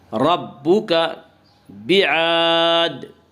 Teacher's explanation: ربک بعاد، الف مدہ، الف ہمیشہ مدہ ہوتا ہے، الف سے پہلے ہمیشہ زبر ہوتا ہے، الف مدہ کو ایک الف کے برابر کھینچ کر پڑھیں گے